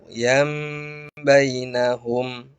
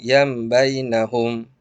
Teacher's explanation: Apanya yang dibalik? Suara an Suara tanwin atau nun dibalik menjadi suara mim. Dan jangan lupa didengung. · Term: iqlab